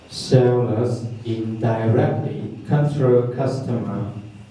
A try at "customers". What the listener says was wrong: Customers. Be careful to look at the end to see if there's an S.